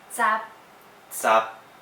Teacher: Eighth tone is up top, short and staccato.